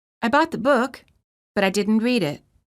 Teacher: Rising intonation indicating that the thought has not ended